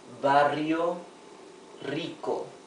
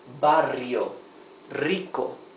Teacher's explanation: double R in the middle of a word, or R at the beginning of a word, like here, it sounds like the rough R